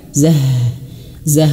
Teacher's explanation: harus jelas mengalir nafasnya dan dia dan dia besar H-nya ya. H-nya besar karena H ini H ini ayah bunda ya dia makhrajnya di pangkal tenggorokan zah. Zah maka besar gitu ya besar.